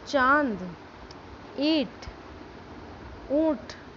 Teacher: आप बोलेंगे तो हमारे ऐसा लगेगा कि हम हमारी नाक से बोल रहे हैं ना · जिन वर्णों के उच्चारण में हम नाक और मुंह दोनों से हवा निकलती है, उन्हें अनुनासिक कहा जाता है।